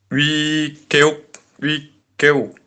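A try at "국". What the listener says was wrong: Ini giak vokal U dibacanya. Ini dibacanya gimana? Bukan geuk, tapi guk. Giok tambah vokal U dibaca gu. Terus giok di akhir dibaca K. Jadinya guk, wiguk.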